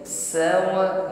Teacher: Huruf sin memiliki sifat hamas ya, berhembus nafas, dan sofir hiddatun fi sautil harfi, ada bunyi desis. Bunyi desis yang tipis, tajam bunyinya ya.